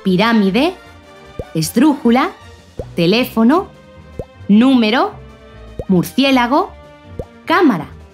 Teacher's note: el acento o la fuerza que se le da a la voz recae en esa antepenúltima sílaba